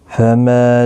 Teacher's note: ما الف مدہ ہے، ایک الف کی مقدار کے برابر کھینچ کر پڑھیں گے